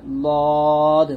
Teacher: দদ হচ্ছে জিহ্বার গোড়ার কিনারা উপরের মারির দাঁতের গোড়ার সঙ্গে লাগবে, লদ, মোটা হবে।